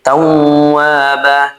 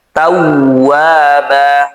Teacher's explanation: Wnya dibaca panjang dua harakat karena alif didahului fathah setelahnya bukan hamzah atau sukun asli. Ba di sini juga dibaca panjang dua harakat ya.